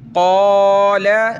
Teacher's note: اس کو آپ نے قَالَ نہیں پڑھنا کیونکہ لام پہ صرف زبر ہے، اس کو ہم نے کھینچنا نہیں ہے، لام زبر ل۔ · بڑی قاف ہے، موٹا کریں گے